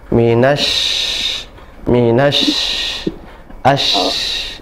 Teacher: Huruf shin atau asya, nafasnya menyebar ya, menyebar dan banyak dan juga mengalir.